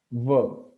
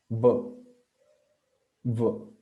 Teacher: The upper teeth come in contact with the lower lip.